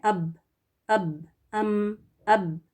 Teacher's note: با دونوں ہونٹوں کو زیادہ شدت سے ملانے سے ادا ہوتا ہے